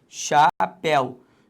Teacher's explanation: Então a sílaba tônica é o zi.